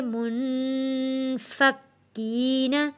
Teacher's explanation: نون ساکن پہ غنہ ادا کریں گے